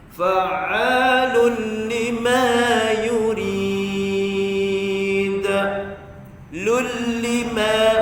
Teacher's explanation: Jangan, tak bunyi langsung nun. Bunyi tanwin tu tak ada langsung bunyi, terus masuk lam. Fa'alun lima, lul lima, idgham masuk lam bila gunnah, tak dengung.